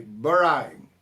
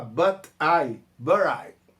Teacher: dá pra gente emendar e virar um som meio R